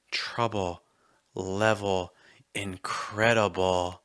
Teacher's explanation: the L is almost a vowel sound, right? The back of your tongue's higher and the front of your tongue's going to drop.